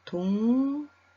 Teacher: 기역이 이응으로, 리을이 니은으로 바뀌었습니다.